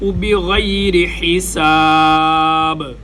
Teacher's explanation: غین اور خا گلے کے اوپر والے حصے سے ادا ہوتے ہیں۔ بغیر، را کے نیچے زیر ہے، را باریک، بغیر حساب، سین سیٹی جیسی آواز، ہا گلے کے درمیان سے، با کے اوپر ہم قلقلہ کریں گے، جہاں پر وقف ہوگا آخری حرف کو ہم ساکن کر دیں گے۔